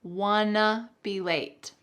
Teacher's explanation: we're going to combine want to to become wanna